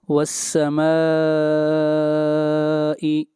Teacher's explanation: یہاں پر مد متصل ہے، میم کو کھینچ کر پڑھیں گے 3 الف کے برابر